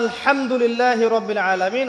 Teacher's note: হা এর মাখরাজ কোথায় বলেন একজন? কণ্ঠনালীর মাঝখান থেকে। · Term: হায়ে হুত্তি